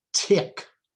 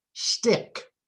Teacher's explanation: aspirated T at the beginning of a word or a stressed syllable tick unaspirated after s